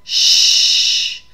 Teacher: you can feel a continuous flow of air so it gives us more of our hissing sound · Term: fricatives